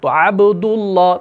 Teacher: عبد اللہ، دال کے اوپر پیش ہے، آگے اللہ کا لام آ گیا تو موٹا پڑھیں گے